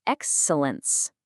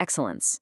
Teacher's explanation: The stress shifts, and that e sound just sort of softens into what linguists call a schwa, which is really just that lazy uh sound